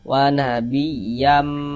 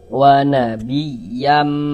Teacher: di bagian yamnya itu suaranya itu kita tahan, kita panjangkan sejenak sepanjang dua harakat